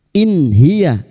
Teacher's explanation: In hiya nun sukun bertemu ha idhar halqi. Nun sukun dibaca jelas tanpa mendengung. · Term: idhar halki